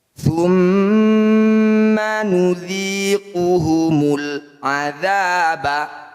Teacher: Sama saja cara bacanya bunyi lam sukun dibaca jelas. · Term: izhar qamariyah